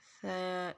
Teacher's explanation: جس طرح ثا کو دونوں دانتوں کے بیچ میں زبان آئے اور نرمی سے ادا کریں